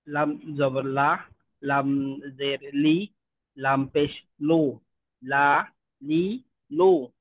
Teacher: দুই দাঁত না কিন্তু, লামের ক্ষেত্রে সামনের উপরের দাঁতের মাড়ির সঙ্গে লাগাই, এখানে দুই দাঁত না, আচ্ছা, একাধিক।